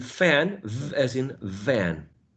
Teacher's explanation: the top teeth or the upper teeth pressed against the bottom lips